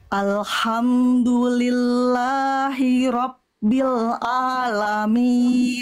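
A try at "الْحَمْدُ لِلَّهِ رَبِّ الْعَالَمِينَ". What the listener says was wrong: H kecilnya lebih dilembutkan lagi, berbisik dari tengah tenggorokan. Alhamdulillahi rabbil alamin.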